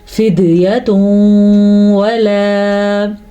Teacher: تنوین کے بعد واو آیا ہے تو ان دونوں کو آپس میں ملانے کے ساتھ ساتھ غنہ بھی کریں گے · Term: ادغام بالغنہ